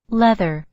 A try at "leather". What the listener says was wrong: Again, leather, not letter. Leather, not letter. They sound very similar, but they're not.